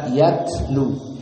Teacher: maka ta sakinah yufidu al-hams, dikeluarkan nafas